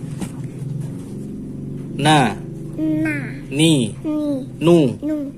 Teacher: Nun makhrajnya ujung lidah dari arah depan dengan gusi atas. Jadi ujung lidahnya menempel ke gusi gigi seri atas. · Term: huruf nun